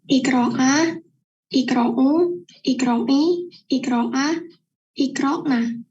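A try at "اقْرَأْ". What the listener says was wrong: A itu bunyinya bersih. A dari hanya mengucapkan iqra'a, iqra'a. Tadi ketukar dengan ain, nggak apa-apa.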